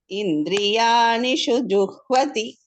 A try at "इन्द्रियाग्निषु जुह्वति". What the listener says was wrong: Indriyagnishu. Ga and na. Indriyagnishu juhvati.